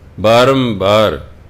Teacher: ਇੱਥੇ ਜਦੋਂ ਬਾਰੰਬਾਰ ਸ਼ਬਦ ਆਏਗਾ, ਇੱਥੇ ਇਹਨੂੰ ਮੰਮਾ ਬੋਲਣਾ, ਇਹਨੂੰ ਬਾਰੰਬਾਰ ਨਹੀਂ ਬੋਲਣਾ। ਇੱਥੇ ਟਿੱਪੀ ਅੱਧੇ ਗੱਗੇ ਦੀ ਆਵਾਜ਼ ਨਹੀਂ ਦੇਗੀ, ਇੱਥੇ ਮੰਮੇ ਦੀ ਆਵਾਜ਼ ਦੇਵੇਗੀ।